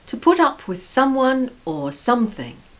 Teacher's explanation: notice the stress on up the preposition up